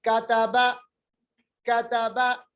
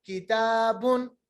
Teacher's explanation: کاف کا جو مخرج ہے وہ قاف سے تھوڑا ہٹ کر ہے, تھوڑا آگے ہے, اور قاف کو موٹا پڑھیں گے, جبکہ کاف کو ہم باریک پڑھیں گے. باریک مطلب اس کو موٹا نہیں پڑھیں گے, اس کو ہم گول کر کے نہیں پڑھیں گے, آواز موٹی کر کے نہیں پڑھیں گے.